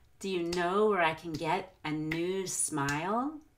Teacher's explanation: prolong the vowel and new and you need to do that we want to stretch out the vowels in our stressed words but words like can well become a very quick kin